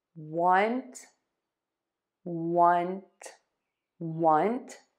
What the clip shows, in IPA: wʌnt